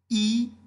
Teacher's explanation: जीभ का अग्रभाग ऊपर उठता है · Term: अग्रस्वर